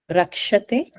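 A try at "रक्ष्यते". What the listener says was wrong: Yakara should come. Rakshyate.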